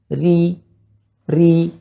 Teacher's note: kalau ro tipis tidak naiknya pangkal lidah dan suara menuju ke bawah.